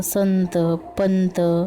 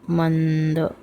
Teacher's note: अनुस्वाराचा उच्चार होताना किंचितपणे नाकातून होतो